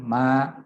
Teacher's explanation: ketika dua bibir diucapkan pada huruf mim, maka pada saat yang bersamaan ada aliran suara yang dikeluarkan daripada rongga hidung